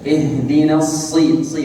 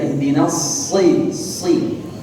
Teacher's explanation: في حرف الصاد لابد أن يأتي له تفخيم بج. Dan di huruf shad itu harus kita datang atau kita mengucapkannya dengan tafkhim big.